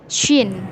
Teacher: Untuk penyebutan huruf shin harus lebih tebal dengan cara memonyongkan bibir kita